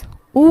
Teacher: اور پیش کی آواز او کی آواز ہے، جس میں ہونٹ اچھے سے گول کیے جاتے ہیں۔